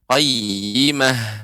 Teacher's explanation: tal marbutoh ketika di akhir ketika ketika waqaf maka menjadi ha besar.